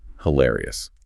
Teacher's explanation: To deploy the word correctly, your vocal pitch must rise. Your eyebrows naturally lift. · Your eyebrows naturally lift. You have to put physical breath support and energy into the hill syllable.